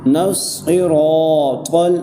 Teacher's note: را کو ایک الف کی مقدار کھینچ کر پڑھ رہے ہیں، وہ اس لیے کیونکہ یہاں پر الف مدہ کا قاعدہ لگ رہا ہے۔